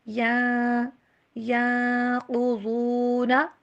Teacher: نون کے اوپر یہاں پہ ہوگا اخفا، آواز کو چھپائیں گے، ین نہیں بلکہ ینقضون، اس طرح سے پڑھنا ہے۔